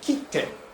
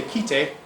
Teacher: the Japanese word for stamp is kite, with a glottal stop with the t. And if you say kite, then that's a completely different word, which I don't actually know what it means, if it means anything.